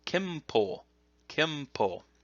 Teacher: The n sound can sometimes in Japanese be pronounced as an M sound.